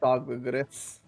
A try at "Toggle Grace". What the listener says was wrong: R-A-S-P-I-P, and it's Toggle Grace. Not Gris, Grace. Grace, like your Grace.